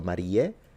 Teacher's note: And then beate, Mariae, instead of beatae, Mariae, because the ae in classical would be a full diphthong, whereas in ecclesiastical is simplified into a e, so Mariae, and then semper virginis instead of virginis, which would be classical.